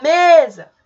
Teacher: a penúltima sílaba é a que fica mais tempo lá a mais intensa · Perceba que o me, eu me estendi mais no me, portanto, ele é a sílaba tônica. Que é a penúltima, portanto, classificado como paroxítona.